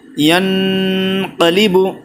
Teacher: گنہ کر رہے ہیں اخفاء حقیقی، نون ساکن کے بعد ایک قاف آیا ہے 15 حرفوں میں سے۔